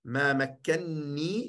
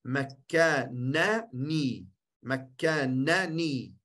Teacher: Die nani wordt ni. Één noon. Met een shadda.